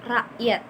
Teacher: Jadi ketika dituliskan kan rakyat ya, namun dibacanya secara benar itu rakyat. Jadi si k-nya ini tidak begitu jelas disebutkan. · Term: K Hamzah